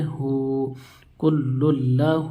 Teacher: ہا کے اوپر الٹا پیش ہے، الٹا پیش واو مدہ کے برابر ہوتا ہے، الٹا پیش کو ایک الف کے برابر کھینچ کر پڑھیں گے